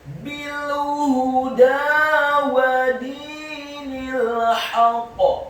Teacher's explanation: Selanjutnya huruf ha-nya dibaca tafkhim tebal dhammah 1 harokat dan huruf dal-nya dibaca tipis fathah 2 harokat karena harokatnya tegak. Dan setelah huruf dal seperti ada huruf ya sukun yang fungsinya menambahkan 1 harokat. · dalnya dibaca tipis kasrah 2 harokat karena setelahnya ada yang sukun. Kemudian huruf nunnya dibaca tipis kasrah 1 harokat karena setelahnya langsung disambung huruf lam yang sukun.